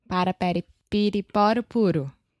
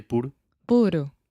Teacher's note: your tongue is just up touching the top of your mouth really really fast and it's just a quick little tap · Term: flap T